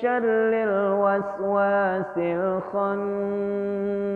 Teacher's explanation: Khan dengung. Kenapa? Karena ada nun bertasydid.